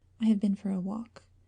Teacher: there's a decided fall in the pitch